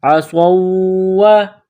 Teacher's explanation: صاد کو واو کے ساتھ ملانا ہے، عصوا، یہ واو ہے، واو مشدد ہے تو صاد کو واو کے ساتھ ملانا ہے، واو میں سختی کرنی ہے · صاد میں سیٹی کی آواز پیدا کرنی ہے، صاد کو موٹا کرنا ہے ، صاد کو واو کے ساتھ ملانا ہے، عصوا، یہ واو